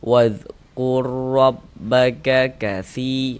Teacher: huruf ro sukunnya dia masuk melebur ke huruf ro yang berharokat ini ya. Kemudian tidak didengungkan ya. · Nah, sekali tebalkan huruf ro-nya. Nggak, pangkal lidah kita tuh naik terangkat ke atas ketika kita mengucapkannya · huruf ro ini memiliki harokat fathah kan ini ya. Nah, ini memiliki harokat fathah, maka huruf ro-nya itu dibaca tafkhim, dibaca tebal. · Jangan dibaca wadhkur dipanjangkan gitu, jangan salah. Pendek saja ya. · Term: idgham mutamasilin shaghir